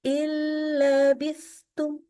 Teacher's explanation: Kalau nun sukun atau tanwin bertemu dengan huruf lam ya kita membacanya huruf nun itu sama sekali hilang karena melebur kepada huruf yang EE kepada huruf lamnya disebut melebur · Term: Idam